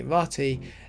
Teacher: dropping that second R after the t sound. So you get a a ratta or something along those lines or just rat.